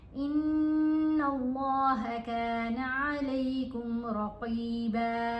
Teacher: गुन्ना करते हुए लाम से मिलाएंगे और अल्लाह की लाम को यहाँ मोटा पढ़ा जाएगा क्योंकि इस लाम से पहले वाले हरफ के ऊपर ज़बर है। ज़बर हो या पेश हो इस लाम से पहले वाले हरफ के ऊपर, तो फिर अल्लाह की लाम को मोटा पढ़ते हैं।